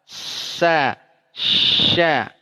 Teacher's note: Sama-sama ham, sama-sama huruf tipis, sama-sama keluar napas. Sama-sama rokhwah. Keluar jalan suara, jalan napas.